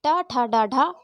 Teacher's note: जिन वर्णों को बोलने पर हमारी जिह्वा मुड़कर तालू से टकराती है उन्हें मूर्धन्य व्यंजन कहते हैं। टा, ठा, डा, ढा आपके मूर्धन्य व्यंजन हैं।